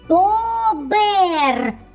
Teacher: вірно твердий приголосний б